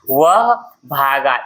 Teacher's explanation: इसमें गा पर आप विशेष जोर या बल दे रहे हैं। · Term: बलाघात